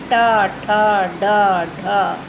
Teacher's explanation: फिर मूर्धन्य से टा वर्ग निकलता है, जिसमें हम दांत और ऊपर दोनों को टच करते हैं बोलते समय। टा हमारी जो जीभ है, जिह्वा है, वो मुड़ती है